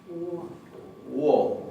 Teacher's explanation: La primera O del alfabeto islandés se pronuncia un poquito como en ruso, wo, como si tuviera una pequeña U adelante